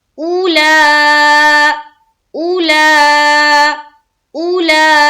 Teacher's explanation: مد ہے، 3 سے 4 الف کے باقدر کھینچنا ہے